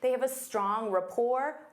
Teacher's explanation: Notice that T is silent.